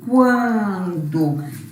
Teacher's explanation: Na palavra quando, o N nasaliza esse A. Eu não falo quando, eu falo quando.